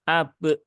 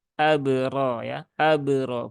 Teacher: pastikan bunyi Qalqalah tidak ada tambahan Hamzah di belakangnya